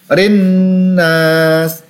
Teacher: nun berharokat tasydid dan berhadapan dengan alif sukun, ditekan dan dibaca panjang 2 harokat.